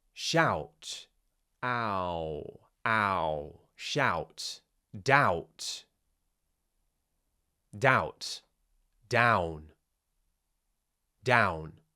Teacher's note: Tongue low, mouth open. Ah. Go into a round shape at the end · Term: ow sound